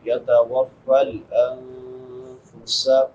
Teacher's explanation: نون ساکن پہ اخفا ہوگا کیونکہ بعد میں حروف اخفا میں سے فا ہے